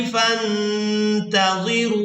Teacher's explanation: नून साकिन पर इख्फा करेंगे